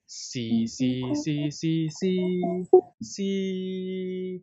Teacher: five is the highest tone, highest flat tones in Cantonese. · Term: first tone